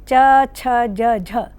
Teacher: च, छ, ज, झ संस्कृत, प्राकृत, पाली भाषा में स्पर्श व्यंजन थे, किंतु आदिकालीन हिंदी में आकर ये स्पर्श संघर्षी हो गए और तब तक से अब तक स्पर्श संघर्षी ही हैं।